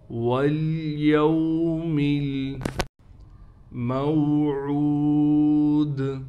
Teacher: عین کے بعد واو ہونے کی وجہ سے عین کو 1 الف کی مقدار کھینچیں گے۔